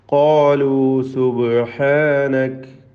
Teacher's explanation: ഖാലു ഖാഫിനും അലിഫിനും തഫ്ഖീം കൊടുത്ത് തടിപ്പിച്ചുകൊണ്ട് പെരുപ്പിച്ച് ഓതേണ്ടതാണ് സ്വരഭാരത്തോടുകൂടി.